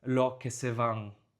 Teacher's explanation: Caribbean Spanish is also known for dropping S sounds at the end of syllables